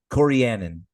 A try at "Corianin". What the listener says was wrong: you missed a syllable in the middle, but I don't know the pronunciation.